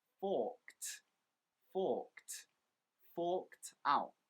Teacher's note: olympic games this year and a quick tip on pronunciation remember when we use the word forked the ed actually makes more of a t a t sound